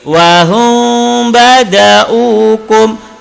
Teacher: Wahum mim mati bertemu dengan ba. Mim kena sembunyikan, kemudian dia kena dengung. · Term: ifa syafawi